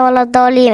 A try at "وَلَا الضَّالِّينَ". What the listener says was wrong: انتوا ليه الاتنين جايبين الميم في الآخر؟ ولا الضالين. بصي لي. لا مش إيم، ولا الضالين.